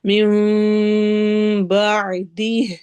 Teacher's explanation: من بعدی میں نون کی آواز کو میم میں بدل دینا ہے، اس کو اقلاب کہتے ہیں